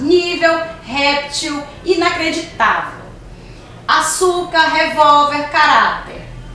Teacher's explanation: são palavras cuja sílaba tônica é a penúltima de trás para frente a penúltima agora ela pode receber acento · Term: paroxítonas